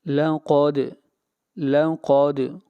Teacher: قاف کو موٹا پڑھیں گے، قاف حروف مستعلیہ میں سے ہے اور دال کے اوپر قلقلہ ہوگا، آواز کو ہلائیں گے